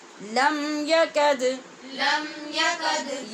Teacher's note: لم کے میم پہ اظہار شفوی اور یکد کی دال پہ قلقلہ